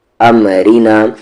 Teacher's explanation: ام، را پر زیر ری، نون کے ساتھ لکھنا، ام رینا، را یہاں پر لائٹ ہوگا، یعنی کہ اسے پتلی آواز سے پڑھیں گے ، ام رینا، یو کو سامنے یس، را کے ساتھ